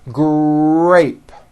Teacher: in the word grape the r sound is stronger and you even hear it more than the G sound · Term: R blends